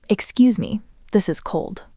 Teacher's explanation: That was very flat. It went down at the end.